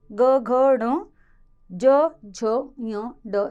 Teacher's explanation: जिन ध्वनियों के उच्चारण में स्वर तंत्रियों में कंपन उत्पन्न होता है वे कहलाते हैं सघोष